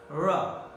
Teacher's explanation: Ra is called frictionless continuant because the two articulators, they don't block it fully. They come and make a quick movement so that the air does not block totally, or there is neither any friction, but the movement is very quick.